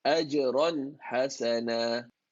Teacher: The tanween is an aligned tanween. It's exactly aligned, so it has to be read clear. No gunna, no merging.